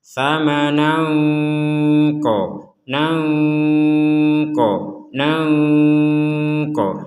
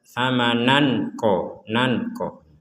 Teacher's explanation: Yang perlu diperhatikan adalah di sini ada tanwin bertemu qaf, maka kita membacanya dengan samar